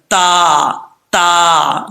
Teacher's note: اگر اوپر کی طرف زبان اٹھے گی اوپر والے تالو کی طرف تو یہ پر پڑھا جائے گا، پھر وہ تو حروف مستعلیہ بن جائے گا۔ لیکن اس کو پڑھتے وقت زبان کو اوپر نہیں اٹھانا، باریک پڑھا جائے گا · زبان کی نوک اوپر والے دانتوں کی جڑوں سے لگے اور زبان اوپر کی طرف نہ اٹھے، تب یہ تا پڑھا جاتا ہے۔ اگر اوپر کی طرف زبان اٹھے گی اوپر والے تالو کی طرف تو یہ پر پڑھا جائے گا، پھر وہ تو حروف مستعلیہ بن جائے گا۔